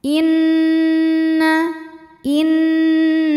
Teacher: Karena nun bertasydid, maka cara bacanya adalah didengungkan. Jadi bunyi N tahan sampai ada suara masuk hidung kurang lebih 2 harokat. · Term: gunnah musyaddadah